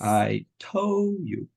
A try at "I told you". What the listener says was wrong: Good, don't forget your duh.